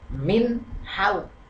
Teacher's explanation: haulik ini disebut izhar halq karena nun mati bertemu dengan Ha ini Nun matinya bertemu dengan Ha ini dibaca dengan jelas